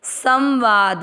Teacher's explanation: स के ऊपर बिंदी, नाक से आधा न पढ़ा जाएगा, सम वा द में मिक्स करेंगे संवाद।